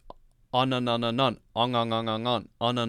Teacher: The back of your tongue is going up against the back of the roof of your mouth and still blocking all the air so that it comes out of your nose instead of your mouth.